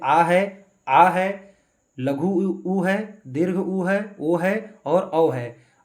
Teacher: जिन स्वरों के उच्चारण में जीहवा का पिछला भाग कार्यरत हो उसे पश्च स्वर कहते हैं।